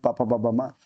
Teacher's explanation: ये आपका ओष व्यंजन ठीक ओठों की सहायता से बोले जाते हैं